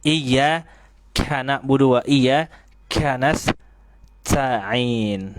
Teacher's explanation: terlalu berlebihan dalam mengeluarkan aliran nafas ketika mengucapkan huruf kaf